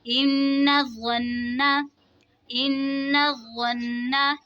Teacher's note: नून मुशद्दद में गुन्ना होगा, तशदीद वाले हुरूफ को जमाओं के साथ पढ़ेंगे